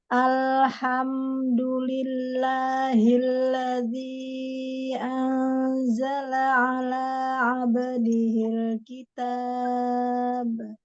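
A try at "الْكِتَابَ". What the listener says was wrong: Tinggal tadi di ininya aja ya, di ba yang sukun qalqalahnya masih be. Kitab.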